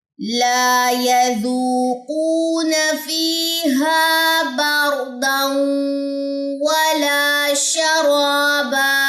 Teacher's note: یا کی زبر اور نون کی زبر لمبی نہ ہونے پائے